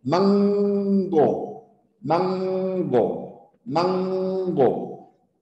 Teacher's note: esa N se denomina velar